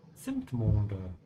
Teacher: the Z in German is pronounced like a TS sound